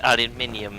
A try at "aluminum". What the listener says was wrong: You're putting extra letters in that shit.